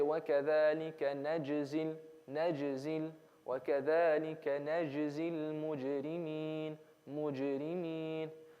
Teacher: I'm basically constricting the jim. I'm basically holding it down. I'm not letting it bounce.